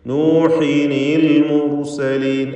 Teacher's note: നൂഹിൻ, ആ നൂനിനെ നൂഹിനി എന്ന് കസ്റുള്ള നൂനാക്കി മാറ്റി നൂഹിനിൽ മുർസലീൻ എന്ന് ഉച്ചരിക്കണം